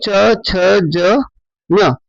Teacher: च वर्ग में हमारे च, छ, ज, ञ ये 5 है। इनका उच्चारण तालु मार्ग से होगा, तालव्य से होगा।